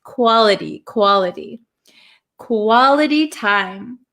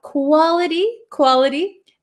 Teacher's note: We can say quality but this t um is surrounded by two vowel sounds. So this becomes a flap t